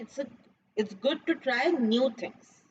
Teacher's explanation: so I'm stressing on new things